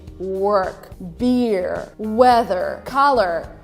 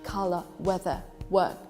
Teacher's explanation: if you want to sound more British, you pronounce these words without pronouncing R.